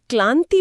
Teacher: ल की ध्वनि बहुत ही शिथिल और प्रवाहमयी होती है। उसमें कोई घर्षण नहीं है।